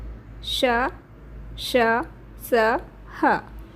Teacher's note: इनके उच्चारण में ऊष्मा निकलती है, अर्थात इसमें घर्षण होता है श्वास का। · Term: ऊष्म या संघर्षी व्यंजन